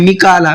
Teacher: وَمِيكَالَ، می کو بھی کھینچنا ہے اور کا کو بھی کھینچنا ہے، یہ پوائنٹ اس لیے میں بتا رہا ہوں، اس میں اکثر غلطی کیا کرتے ہیں، وہ میکالا پڑھتے ہیں، میکالا، میم کو نہیں کھینچتے ہیں، کاف کو کھینچ لیتے ہیں